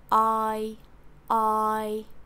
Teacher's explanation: For I, you want to start with an open jaw and the tongue being in the center.